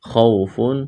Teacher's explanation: خا کو موٹا کرنا ہے، واولین ہے، اس کو کھینچنا نہیں ہے